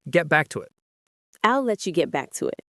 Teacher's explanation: The get back to it often runs together very quickly.